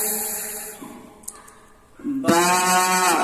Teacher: বা, দুই ঠোঁট মিলে যাবে, বা